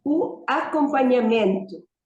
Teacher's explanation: the stress is on the before last syllable as the general rule